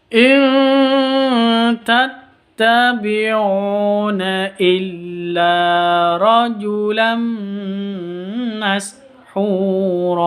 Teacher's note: Non mati bertemu dengan ta. Ini harus cara bacanya samar didengungkan, siap-siap ke ta-nya.